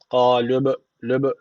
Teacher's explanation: B harfi cezim almış. Kalkale tecvidi var. Birazcık vurguluyoruz.